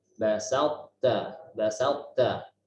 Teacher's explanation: Jadi huruf to nanti bertemu ta. Kita baca dengan tebal huruf to-nya. Diperjelas itbaqnya, sifat tertutupnya huruf to itu.